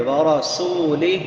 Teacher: للہ ورسولہ، را پر پڑی جائے گی، سین سیٹی والے حروف میں سے، ورسولہ، سین کے بعد واو مدہ ہے، واو ساکن ما قبل ضمہ ہے، تو اس کو ایک الف کے برابر لمبا کر کے پڑھیں گے۔ ورسولہ، ہا بڑی ہا ہے، اقصی حلق سے، حلق کے آخری حصے سے جو سینے کے ساتھ ملا ہوا ہے